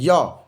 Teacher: तो य रहेगा तो तालव्य से।